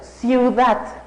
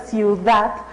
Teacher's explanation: cuando pronunciamos la palabra ciudad escuchamos que en la última sílaba tenemos el sonido más fuerte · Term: acento prosódico